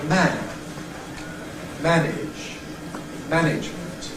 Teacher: You can see why the vowel in ‘man’ can expand, take plenty of space for itself. In ‘manage’, it’s got to be a bit clipped because of the ‘-age’ syllable to follow. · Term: Rhythmic Clipping